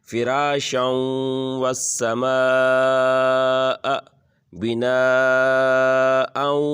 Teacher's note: والسماء کے اوپر بھی مد ہے اور بنا کے اوپر بھی مد ہے، تو اس دونوں کو کھینچیں گے